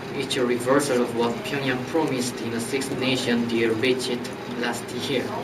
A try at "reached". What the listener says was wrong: Do not give me the extra sound, not reached, reached.